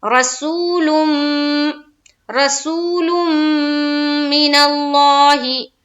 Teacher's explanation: رسولم لام کو جب میم سے ملائیں گے تو یہاں پر کیا کریں گے، میم مشدد کا غنہ. تھوڑی دیر آواز کو روکنا ہے ناک میں